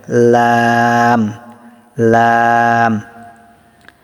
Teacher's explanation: জিহ্বার আগার কিনারা সামনের উপরের এক পাশের দাঁতের গোড়ার সঙ্গে লাগিয়ে লাম উচ্চারিত হয়। ঠিক আছে, লাম উচ্চারিত হয়, এজন্য লাম 3 আলিফ টান হবে, লাম লাম।